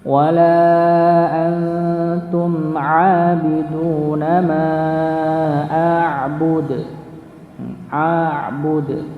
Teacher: Jadi qalqalahnya kelihatan sekali, ada pantulannya di situ.